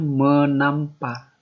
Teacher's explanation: jika menasal bertemu dengan kata yang diawali oleh bunyi T, T mengalami proses peluluhan. Atau dia itu hilang, tidak ada lagi.